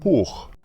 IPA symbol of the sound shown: χ